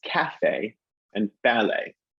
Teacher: when we head over the atlantic we switch to the first syllable